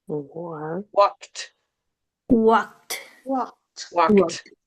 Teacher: If you have K sound at the end here, >> then when you add this E d, it becomes a T sound. · And you have to pronounce the K and the T.